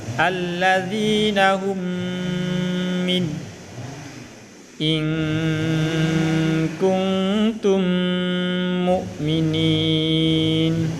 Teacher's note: mengeluarkan mim rangkap atau ditasdidkan dan wajib dibaca dengung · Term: idgham mimmi